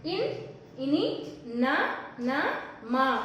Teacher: हम बोलने के समय इसका शब्द नाक से आते हैं, इसीलिए अनुनासिक व्यंजन कहते हैं।